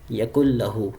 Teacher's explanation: نون کو چھوڑ دیا، کاف کو لام کے ساتھ ملا دیا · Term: ادغام